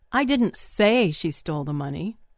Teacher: putting the stress on the word say